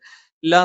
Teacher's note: നാവിന്റെ അറ്റം മേലെ മുൻപല്ലിന്റെ മോണയിലാണ്